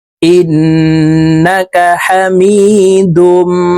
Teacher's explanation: ওয়াজিব গুন্না হরকতের বামে নুনের উপরে তাসদিদ আছে তো এই হামজা তাশদি ওয়ালা নুনের সাথে নাকের বাঁশি থেকে গুন্না করে পড়বো